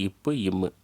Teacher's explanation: மேல் உதடும் கீழ் உதடும் பொருந்தும் போது தோன்றும் எழுத்துக்கள்